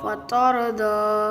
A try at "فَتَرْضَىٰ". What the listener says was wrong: اور تاروں پہ آواز نہیں ہلے گی، قلقلہ نہیں یہاں کریں گے، فترضی۔